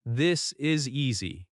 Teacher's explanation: Notice the tiny stress on this. That stress carries meaning.